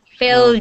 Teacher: There is no T sound. No T sound. It's a D sound.